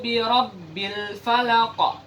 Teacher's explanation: Qul a'udzu birabbil falaq. Jadi huruf qaf di situ harus besar pantulannya, bunyi pantulannya. Harus jelas, ya. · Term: qalqalah kubra